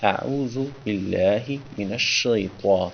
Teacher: تو کو موٹا کر کے پڑھا ہے تاکہ تا اور تو میں تمیز ہو